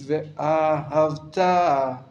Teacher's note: The emphasis is on the last syllable, really. And a little bit on the aleph as well.